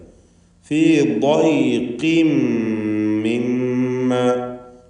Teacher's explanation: ضيقിൻ ضാദിന് പൂർണ്ണമായ തഫ്ഖീം കൊടുക്കണം.